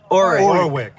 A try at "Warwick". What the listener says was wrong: Not the first W, the middle one.